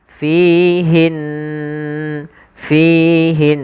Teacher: ghunah yaitu kita membaca dengan memasukkan suara ke rongga hidung kita